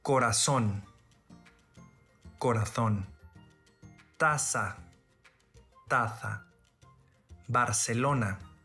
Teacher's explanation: in spain the letter z is pronounced as th as an english word thing but in all other regions is pronounced as s